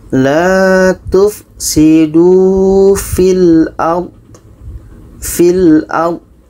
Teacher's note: Fi ini dibaca pendek karena bersambung dengan huruf yang mati. Ini sebab pertama kalau dibaca pendek karena bertemu dengan huruf sukun atau mati.